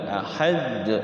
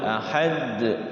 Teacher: ahad setelah sukun pantulkan kalau tidak ada tasyidnya